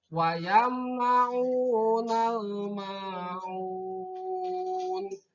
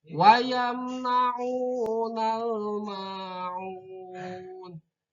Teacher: Kalau dihubungkan maka alif lamnya maka harus terdengar jelas matinya.